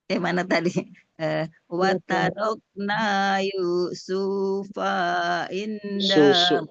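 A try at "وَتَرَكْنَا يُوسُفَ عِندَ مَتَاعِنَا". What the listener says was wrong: Sunya jangan dipanjang, Bun. Sunya jangan dipanjang. Yusufa inda mata. Yusufa. Yusufa inda mata.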